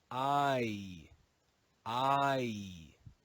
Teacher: It's actually a double sound, which is called a diphthong.